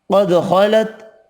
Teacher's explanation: قاف خا حروف مستعلیہ پر پڑھیں گے، دال ساکن پر قلقلہ کرنا ہے۔